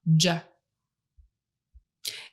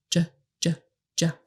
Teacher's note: It's louder than the SH sound because you are pushing harder to get that air go forward between a much smaller opening above your tongue. So the place where you will be putting your tongue is right up here.